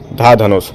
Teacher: चौथे नंबर का तो महाप्राण भी हो गया और घोष भी